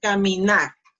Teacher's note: Pronunciation, caminar, caminar. So, the last syllable, nar, is the strongest one. See? Caminar.